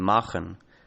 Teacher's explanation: in intervocalic and word final positions, k became a fricative ch